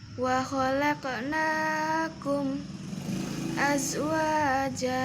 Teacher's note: Setelah kum dibaca saktah.